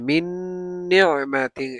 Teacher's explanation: মিন নিয়ামাতিন, নুন সাকিনের পরে নুন আসছে ইদগামে বা গুন্না, মানে মিমের সাথে নুনকে মিলাইয়ে আবার গুন্না করে পড়তে হবে , মিন নিয়ামাতিন এভাবে, মিন নিয়ামাতিন, এই নুনটাকে পড়তে হবে না,